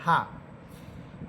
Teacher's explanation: হা এটা বাতাস একেবারে ছেড়ে দিয়ে পড়বেন